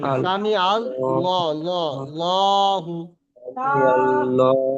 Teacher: আল্লাহ শব্দের লামের পূর্বে অর্থাৎ আগে জবর বা পেশ থাকবে তখন কি করবে পুর পড়তে হবে, অর্থাৎ মুখটা গোল করে ঠোঁটটা গোল করে এমন সামি ভাবে পড়বেন আল সামি আল ল, ল, লহু, আল্লাহ।